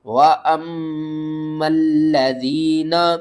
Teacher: وَأَمَّا الَّذِينَ، لام کو 2 بار پڑھیں گے، تشدید کی وجہ سے سختی بھی کریں گے